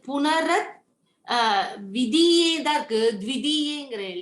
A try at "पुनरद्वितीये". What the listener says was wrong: It's punar advitiye. Dvi, first Dvi is coming and then T. Dvi T-A. Dvi T-A. So D-V-I, Dvi, then T-I, T.